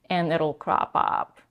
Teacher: She goes at the end to a vocal fry